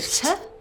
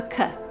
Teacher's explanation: The only difference is where the tongue closes: Forward near the teeth for 'tuh', and back near the soft palate for 'cuh'